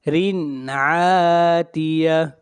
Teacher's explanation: یہاں پر تنوین کو ظاہر کر کے پڑھیں گے، اس لیے کہ تنوین کے بعد اگلا حرف عین ہے اور عین حروف حلقی میں سے ہے۔